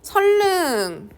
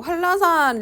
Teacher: 유음화는요 리을과 니은이 만났을 때 니은이 유음인 리을로 바뀌는 현상이에요